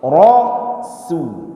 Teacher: Karena dia huruf tipis, walaupun dia berbaris dhammah tapi tetap tipiskan.